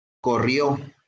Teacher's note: su acento en la última sílaba